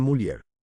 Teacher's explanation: Esta es la evolución de la, llamada por Menéndez Pidal L-yod, la cual está conformada por un fonema alveolar lateral sonoro, más un diptongo que inicie con la vocal alta anterior